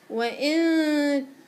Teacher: وإن في هنا غنة، غنة إخفاء، خديها وطوليها